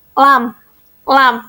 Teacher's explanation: udara mengalir di samping lidah yang dihasilkannya adalah huruf lam